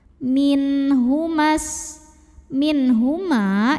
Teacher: ada nun sukun yang ketemu dengan huruf halqi atau huruf tenggorokan yaitu ha maka nun sukun dibaca dengan izhar atau Jelas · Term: izhar halqi